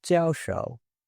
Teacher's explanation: Jiao shi, an instructor, and jiao shou, professor, on the other hand, are nouns, so you'll hear those in the falling fourth tone.